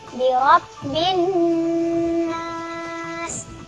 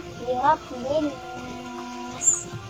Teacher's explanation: Selanjutnya ada alif lam syamsiah dan nun bertasydid, di mana nun bertasydid harus didengungkan. Dan cara membacanya adalah bi rabbin nas, jangan bi rabbin nas.